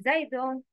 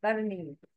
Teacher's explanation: We don't get the tongue out while pronouncing Zai.